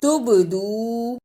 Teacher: با پر جزم کی صورت میں قلقلہ بھی کرنا ہے